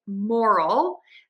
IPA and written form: ˈmɔrəl (MORAL)